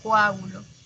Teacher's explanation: Profesora, pero nosotros pronunciamos coágulo con U. Sí, porque el español peruano tiende a que sus vocales O y E se escuchen como U y I